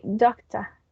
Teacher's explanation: They are not going to pronounce the final R sound. And it's just because they just randomly elide the R sound of the words.